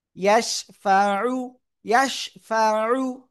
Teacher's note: মাং জাল্লাযী ইয়াশিন জবর ইয়াশ, ফা জবর ফা, আইন পেশ উ, উ গলা চেপে উ